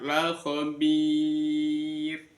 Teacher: ada mad thobi'i bertemu dengan waqaf maka namanya mad arizi lisukun dibaca lima harakat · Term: mat aridi lisukun